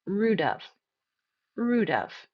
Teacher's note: I don't say rude of. It's not two stressed syllables. Of is going to be unstressed.